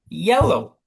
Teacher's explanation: yell-nya kan ya yang ditekankan